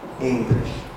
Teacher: that has the accent of a word for example in english in the word english for example this is divided into two syllables and the accent is on the first one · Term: tonic syllable